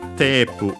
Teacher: the A sound becomes long E. We add the vowel U for the consonant at the end